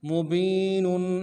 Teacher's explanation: मीम को नरमी से अदा करेंगे, बा को या के साथ मिलाना, या मद्दा है, एक अलिफ दाल में खींचेंगे, नून के ऊपर तनवीन है, गुन्ना करेंगे, वक्त नून को साकिन करेंगे।